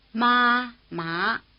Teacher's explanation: Both are in the upper part of the pitch range, but the high tone stays level while the rising tone climbs sharply, starting slightly below the high tone and reaching the top of the range.